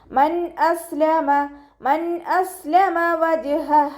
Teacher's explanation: നൂൻ സാക്കിനയ്ക്ക് ശേഷം ഇദ്ഹാറിൻ്റെ ലെറ്ററായിട്ടുള്ള ഹംസയാണ് വന്നിട്ടുള്ളത്. നൂൻ സാക്കിനയെ വ്യക്തമാക്കി മണിക്കാതെ ഉച്ചരിക്കുക കേട്ടോ. നൂനിൻ്റെ സൗണ്ടിനെ വ്യക്തമായിട്ട് കേൾപ്പിക്കുക.